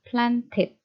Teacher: plant ini berakhiran dengan teh, maka akhirannya akan kita baca menjadi it ya. Jadi plant ini masuk ke opsi yang ketiga, planted.